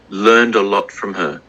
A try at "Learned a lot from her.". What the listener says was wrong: I think the lot was different. Like what we said, the O sound, the O up.